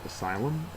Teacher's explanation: The first syllable is accented.